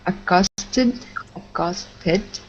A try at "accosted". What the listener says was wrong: Excellent.